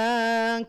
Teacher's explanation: Qalu inna muhliku ahli hadhil qaryah. Qaryah, roknya dibaca tebal. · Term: tafkhim mufakhamah